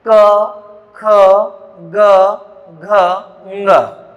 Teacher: इनको बोलते समय जो वायु है वो कंठ को छूकर बाहर निकलती है, अतः ये कंठव्य व्यंजन कहलाते हैं।